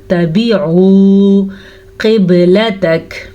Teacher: قاف موٹی پڑھیں گے، با پہ کلکلا ہو رہا ہے اور جیم پہ ہم رکنا چاہ رہے ہیں تو کاف ساکن کر دیں گے.